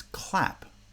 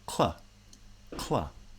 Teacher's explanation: So in the word clap, for example, the k sound is very brief, very short. The ul sound is a little bit longer.